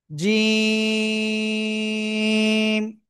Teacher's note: জিহ্বার মধ্যখান বা মাঝখান তার বরাবর উপরে তালুর সাথে লাগাবো